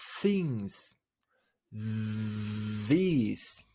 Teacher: pretty much in the same way they are called interdental fricatives they are called interdental because according to their place of articulation the tongue position itself in between the teeth · so the air moving through generates an audible friction things these there is only one difference between them and it is the fact that in one of them the vocal folds do not vibrate